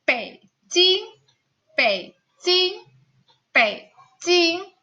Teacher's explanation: Jadi nada ketiga ini bacanya hanya setengah.